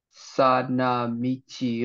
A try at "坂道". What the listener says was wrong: This is actually pronounced as saka michi. That ka in a second.